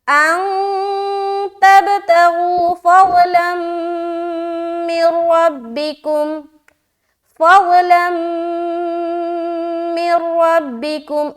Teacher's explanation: क्योंकि यहाँ हम कर रहे हैं गुन्ना, और रा में हमारी आवाज नहीं रुक रही है, क्यों? क्योंकि यहाँ पर हम बगैर गुन्ने के साथ पढ़ रहे हैं · मीम में हमारी आवाज रुक रही है, हम रोक रहे हैं, क्यों? क्योंकि यहाँ हम कर रहे हैं गुन्ना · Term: इदगाम ताम